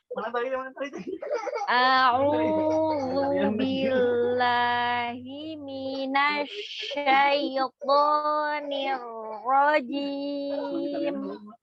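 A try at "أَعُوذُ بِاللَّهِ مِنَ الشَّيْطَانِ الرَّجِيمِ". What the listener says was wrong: Lamnya tidak ada powernya. Bila, tidak. Bila. Apa bedanya? Apa bedanya coba? Kalau bacanya bila, bukan bila, apa bedanya? huruf lamnya tadi dibacanya rogoah, bila lembut. Tapi lam itu sifatnya adalah tawassut baini ya, tengah-tengah gitu ya, tidak terlalu ditekan, tidak terlalu dilepas. Jadi bila, bukan juga bila, tidak. Bila, bukan bila. A'udzu billahi billah.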